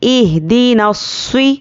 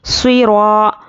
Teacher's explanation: स्वाद पर देखिए ये हुर्फ़ मुस्तालिया में से है तो इस पर ज़ेर आने पर भी हम स्वाद को मोटा पढ़ेंगे। इहदिनस्वी, रॉ अलिफ ज़बर रॉ, अलिफ मद्दा है, 1 अलिफ के बराबर खींचना है।